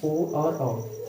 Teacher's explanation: कंठ और ओष्ठ दोनों से जो उच्चारित होता है उसे हम कहते हैं कंठोस।